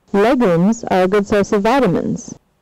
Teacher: we can hear that there's a rise and a fall and a rise again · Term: multiple phrases